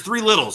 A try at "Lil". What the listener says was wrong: not Littles, 3 Lils. Not Little. Lil. You say Little. Lil.